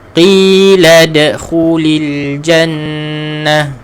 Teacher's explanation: Lad huruf dal mati dibaca dengan qalqalah.